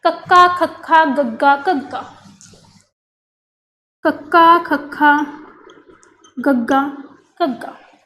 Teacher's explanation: कंठी व्यंजन वो व्यंजन हुंदे ने जिन्हां नूं बोलते समय या उचारते समय जिहड़ी अपनी जीभ हुंदी है वो कंठ गले के उपर वाले हिस्से नूं टच करती है।